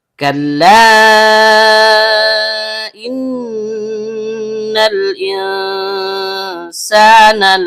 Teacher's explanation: Kaf berasal dari bagian belakang lidah yang naik ke langit-langit di atasnya. Lam dari ujung lidah yang bertemu dengan bagian depan langit-langit mulut. · Karena nunnya bertasydid, maka hukum bacaannya gunnah asli. Dibaca dengung dan setiap dengung keluar dari hidung.